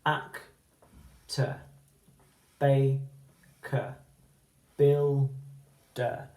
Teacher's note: the schwa that I talked about yesterday, at the end of those 2-syllable words, is that unstressed vowel sound